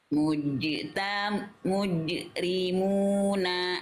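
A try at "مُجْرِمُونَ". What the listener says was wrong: Jadi Bunda diringankan itu Bunda tuh bacanya jadi kayak berat qalqalahnya. seperti ada hamzahnya.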